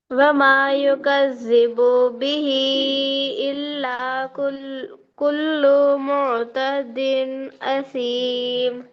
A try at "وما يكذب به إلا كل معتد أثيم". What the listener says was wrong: ماں کا الف مد برابر نہیں ہوا. ماں کا الف مد برابر نہیں ہوا. بو کو آپ کیا کرے، مد کے برابر کھینچ دیے. اسی طرح لو کو بھی جو ہے مد کے برابر کھینچ دیے.